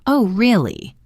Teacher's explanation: His rising intonation on really signals his surprise.